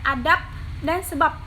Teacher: fonem B pada silaba akhir kata adab dan sebab diucapkan P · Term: netralisasi